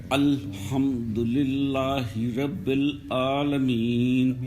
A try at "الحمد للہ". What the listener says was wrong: یہاں للہ میں بھی ایک تو اس کو موٹا نہیں پڑھنا. الحمد للہ. الحمد للہ.